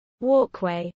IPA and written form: ˈwɔː.kwɛɪ (walkway)